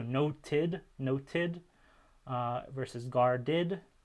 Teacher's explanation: the past tense ed allomorphs being id after alveolar stops